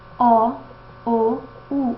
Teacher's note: E posterior, quando nós dizemos O, U. A gente percebe que a língua ela sofre uma retração, ela ocupa a parte mais posterior do trato vocal. Ainda, por último, essa vogal pode ser arredondada ou não arredondada, vai depender na hora a gente observa a protusão dos lábios.